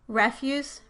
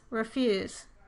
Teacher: the first vowel changes from the aw sound to the unstressed ah sound